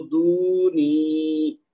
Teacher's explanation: اس کو دونی نہیں کہنا، دال کو بھی لمبا کھینچنا ہے، نون کو بھی لمبا کھینچنا ہے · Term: واو مد